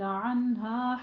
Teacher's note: ہا موٹا ہا پڑھنا ہے، سینے کی جانب اقصے حلق سے آپ نے ادا کرنا ہے